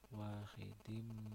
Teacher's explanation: berdengung sebab ada tanwin bertemu dengan mim bacaannya mendengung